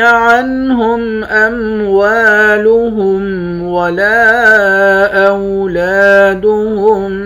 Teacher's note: واو کے بعد الف ہے، الف حروف مدہ ہے، حروف مدہ کو ایک الف کے برابر کھینچ کر پڑھتے ہیں۔